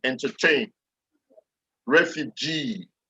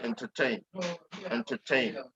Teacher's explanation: So whenever you see words like with ending like in, as in entertain, that last syllable will carry the stress